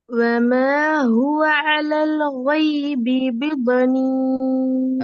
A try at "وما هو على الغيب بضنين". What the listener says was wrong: அதே கைபி அலல் ரெண்டும் ஒரே இஷ்டில தான் வருது. அலல் கைபி. அலல் கைபி தான் வருது. கோ வருது இல்ல. கோவை சரியா உச்சரிச்சு பழகிறதுக்கான வழி என்ன? நாவினுடைய பின்பகுதியும் தொண்டையினுடைய பகுதியும் ஒரு இடத்துல என்ன செய்யணும்? ஒன்று சேரணும், படணும். படலண்டா அந்த உச்சரிப்பு வராது, கோட சவுண்ட் வராது.